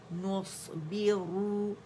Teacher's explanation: صاد میں رخاوہ بھی ہے، اطباق بھی ہے، ہمس بھی ہے، سیٹی بھی ہے